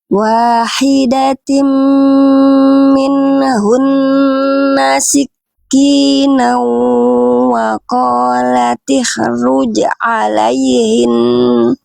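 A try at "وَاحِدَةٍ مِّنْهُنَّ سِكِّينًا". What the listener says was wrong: Oke, lanjut.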